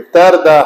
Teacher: را کا سکون ما قبل زبر ہے تو پر پڑھیں گے